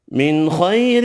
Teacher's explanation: نون کا اظہار ہوگا، خا حروف مستعلیہ پر پڑھیں گے